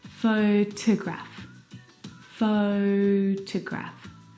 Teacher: the second syllable is unstressed and it is uh reduced down to the schw sound